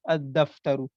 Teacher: اور لام کا الگ سے اظہار نہیں ہو رہا ہے، لام کا تلفظ نہیں ہو رہا ہے، بلکہ وہ کیا ہو گیا، وہ دال میں مدغم ہو گیا، دال میں مدغم یعنی مرج ہو گیا.